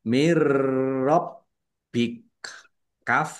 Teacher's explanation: Roknya ditandai dengan ada tasdidnya, roknya dibaca double. Kemudian baknya juga dibaca double, ada tasdidnya, ditekan dan ditahan biar tampak doublenya.